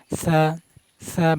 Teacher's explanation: সা সা বাতাস বের করবেন, হামস করবেন। সা সা বাতাস না বের হলে উচ্চারণ হবে না। সা সা সা সা, ঠোঁট ফাঁক করে উচ্চারণ করবেন।